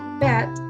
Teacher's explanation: the word bat is almost pronounced in the central area of the tongue and using low tongue